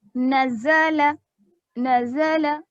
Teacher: ز کو باریک پڑھیں گے نا، سیٹی کی آواز اس میں آئے گی. نزل نزل، جلدی پڑھیں گے، حرکات ہونے کی وجہ سے جلدی پڑھیں گے، تھوڑا بھی نہیں کھینچیں گے.